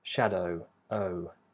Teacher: They do round for the vowel that comes before it, but then they relax, and you just get the or consonant sound where the lips are relaxed. With shadow, the lips do round, so you have the O vowel, which ends with a rounded lip position.